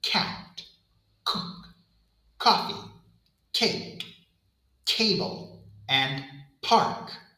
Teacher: For the K sound, the back of the tongue rises and presses firmly against the soft pallet, completely blocking the airflow. You can see the back of my tongue moving up and sealing against the roof of my mouth.